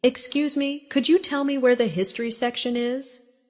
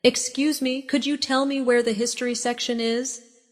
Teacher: In natural speech, could you becomes could ya.